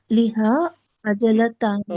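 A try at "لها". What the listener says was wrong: ओहो, sorry sorry, नहीं नहीं, लहा आएगा सिस्टर यहाँ पे, लिहा नहीं, लहा जी।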